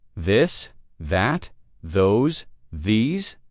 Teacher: Now practice the softer version of the where you let your tongue touch your teeth lightly but use your voice